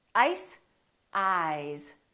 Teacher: this s is actually pronounced as a z sound